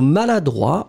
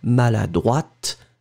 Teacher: And then, well, the feminine form, you will add this in the end and you will pronounce it slightly differently because maladroit, masculine, final T not pronounced. And then feminine form, maladroite, t, you will pronounce it.